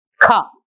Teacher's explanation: R is silent, so we only pronounce as ka